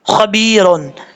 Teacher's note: خوا زبر خوا، با زیر بی، خب، با زیر یا بی، خبی، رادو پیشرون، خبیرون، با کے بعد یا ہے، یا ساکن ہے، یا مدہ ایک الف کی مقدار لمبا کر کے پڑھا جائے گا، خواہ حروف مصالحہ میں سے پر پڑھیں گے، اور یہاں پر را کو کیا پڑھیں گے، بریک پڑھیں گے، را ساکن تو ہو رہا ہے لیکن پڑھیں گے بریک۔